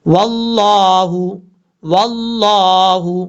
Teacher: لفظ اللہ سے پہلے زبر ہے، اس کو پر پڑھا جائے گا